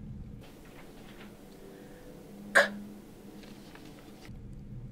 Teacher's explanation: K is a velar sound made using the tongue and the roof of the mouth. It is a stop sound and is voiceless. The vocal cords do not vibrate.